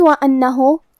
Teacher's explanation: کیونکہ حرف النون پہ تشدید ہے تو ہم دو حرف کے برابر حرف النون کو پڑھیں گے، کیونکہ تشدید کی اصلیت دو حرف ہے.